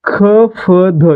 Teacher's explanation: ख, फ, ध यांचा उच्चार करताना क सोबत ह, प सोबत ह आणि द सोबत ह यांचा उच्चार होतोय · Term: महाप्राण